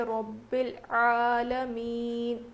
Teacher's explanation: یہاں پر قلقلہ نہیں ہے، ربل کریں گے تو یہ قلقلہ میں آ جائے گا، اور لام حرف قلقلہ میں سے نہیں ہے